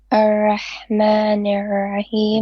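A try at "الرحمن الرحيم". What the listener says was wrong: Make your ra more heavy and with a bit of tikrar.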